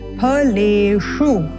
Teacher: श मुर्धन्य श है इसलिए उच्चारण मुर्धा से करना है